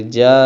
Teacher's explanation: جیم الف زبر جا ہے اور بعد میں حمزہ بھی ہے، تو ہم اس کو کھینچ کے پڑھیں گے جا، ایسے کر کے. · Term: مد